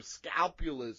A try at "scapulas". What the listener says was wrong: Scapula? Yeah, you said scalpula. Scapula. Scapula. No, not scapula.